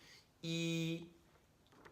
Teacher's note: your lips are pulled pretty far back pretty tight e and your tongue is pretty high up in your mouth it doesn't have to move very far to stop that air